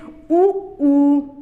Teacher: वृत्ताकार में यह होता है कि होठों की गोलाई हो जाती है। जब इनका उच्चारण करते हैं तो होठ गोल रूप धारण कर लेते हैं,